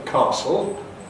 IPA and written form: ˈkæsl (castle)